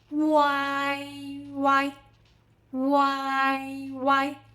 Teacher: Start with U, then glide through A, then finish with E.